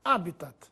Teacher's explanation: mas se pronuncia como se fosse proparoxítona